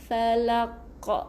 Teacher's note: Tapi di sini asalnya falaqi. Okey, tapi kita nak berhenti di sini, kita tambah tanda mati. Jadi dia punya qalqalah yang lebih nyaring, qalqalah kubra. Jadi falaq, ada k, dapat okey, ulang balik, mantapkan.